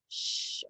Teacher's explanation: it shh watch my mouth when i say that sound shh my lips are puckered it's a continuous sound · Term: diagraph sh